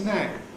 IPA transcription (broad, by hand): ˈɪs ən ˈæt